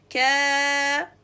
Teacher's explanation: Make sure to make the sound of the madud from its articulation point, which is the back part of the tongue with the hard and fleshy palate, both together. And stretch it for 2 counts, so extend the time of the ka fatha for longer than 1 count.